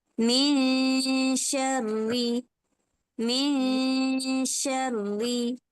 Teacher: tengah lidah kita tu yang terangkat